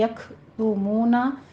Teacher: काफ के ऊपर हमस करेंगे, ता के ऊपर ज़म्मा है, होंठों को गोल कर लीजिए, और मूना में भी वाव मद अदा करेंगे।